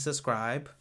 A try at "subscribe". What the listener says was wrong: Subscribe. Subscribe. There's no B in there. It's silent. Subscribe.